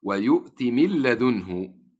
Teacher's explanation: فتدخل النون وتدغم في اللام إدغاما كاملا، لا أسمع صوتا للنون ولا لصفة النون وهي الغنة